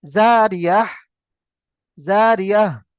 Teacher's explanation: গোলতার উপরে থামতে হলে গোলতাকে হা সাকিন করতে হবে, গোলতাকে হা সাকিন করে পড়তে হবে।